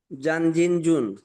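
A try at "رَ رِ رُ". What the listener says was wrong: জান না, রান রিন রুন পাতলা।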